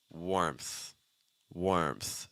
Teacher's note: So we have an R sound, slightly R colored vowel, then an M sound followed by a TH. So ermth, ermth.